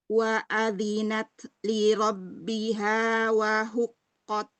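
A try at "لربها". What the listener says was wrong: Mau ro tebal ya. Li rabbiha.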